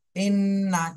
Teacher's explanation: হরকতের বামে নুনে তাসদিদ ওয়াজিব গুন্না